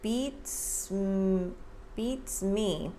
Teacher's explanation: notice how the S is linked to the M